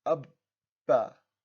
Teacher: You notice that I'm holding it just for a split second and then releasing it. Notice that I'm not doing qalqala even though it's a ba because we only do qalqala on the 5 letters only if there is a sukun. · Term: shadda